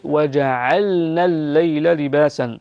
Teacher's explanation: اللام مظهرة عند النون